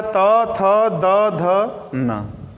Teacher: तो दांत और जीभ जाकर दांत का संपर्क करेगी, छुएगी दांत को, तो इसलिए इनको दंत वर्ण कहते हैं